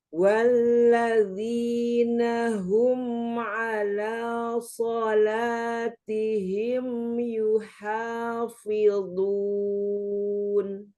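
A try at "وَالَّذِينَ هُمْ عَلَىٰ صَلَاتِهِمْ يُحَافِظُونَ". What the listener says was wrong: Hati-hati di kasrohnya ya. Di sini ketemu lagi di kasroh. Walladzi, ya. Rahang diturunkan pada saat posisi kasroh. Walladzina hum.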